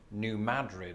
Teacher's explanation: They emphasize the first syllable as in New Madrid